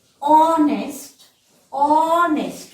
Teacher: You can say that H is a bit ignorant in some of the languages. Okay, so we are saying it as honest, and our H remains silent, and the sound that we are getting is O, O. So hence we put an N before honest.